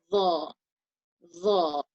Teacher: Zal is light and Dha is a heavy, poor sound. Dha, lifting your tongue up in the back of your mouth, and also between your teeth, it's being lifted from the sides.